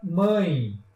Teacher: vocês percebem que ao falar mãe o nariz vibra